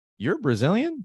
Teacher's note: So I don't use a regular question. I use as if it were an affirmation, and I use the intonation of a question, just like in Portuguese.